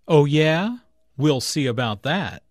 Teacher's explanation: Notice the emphasis on that, which refers back to good at spelling.